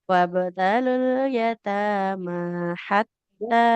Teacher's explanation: Kafnya panjang. Kaf fathah bertemu alif. Dua harokat.